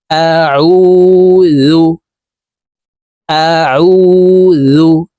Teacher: আইন হরফের উচ্চারণ হলুকের মধ্যখান থেকে চাপ দিয়ে পড়তে হবে